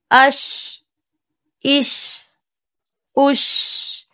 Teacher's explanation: شین کو ادا کرتے وقت آواز ہمارے منہ کے اندر پھیل جاتی ہے اور اس میں پستی بھی ہے اور صفت ہمز بھی پائی جاتی ہے۔ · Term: تفشی